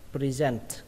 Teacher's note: trọng âm của nó rơi vào âm thứ hai các bạn nhé, present, và kết thúc bằng âm t bắn hơi, present, present.